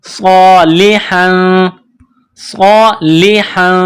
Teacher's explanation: ہا کے اوپر دو زبر تنوین ہے، تنوین کے بعد فا ہے، حروف اخفا ہے، تو یہاں ہم غنہ کریں گے، آواز ناک میں چھپائیں گے